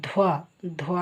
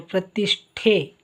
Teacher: ಕೆಳಗಡೆ ವತ್ತಿದೆ ಧ್ವ ಧ್ವ ಅಂತ ಉಚ್ಚಾರ ಮಾಡಬೇಕು ಧ್ವನಿತ ವಾಗುತ್ತದೆ ನೋಡಿ ಇಲ್ಲಿ ಮಹಾಪ್ರಾಣಕ್ಷರ ಒತ್ತಕ್ಷರವಾಗಿ ಬಂದಾಗ ನೀವು ಇದನ್ನ ಮಹಾಪ್ರಾಣಕ್ಷರವನ್ನೇ ಹೆಚ್ಚು ಒತ್ತಡ ಕೊಟ್ಟು ಹೇಳಬೇಕು ನೋಡಿ ಪ್ರತಿಷ್ಠೆ ಇದು ಕೆಳಗಡೆ ಇರುವಾಗ ಇದನ್ನ ಹೆಚ್ಚು ಇದಕ್ಕೆ ಹೆಚ್ಚು ಒತ್ತಡ ಕೊಡಬೇಕು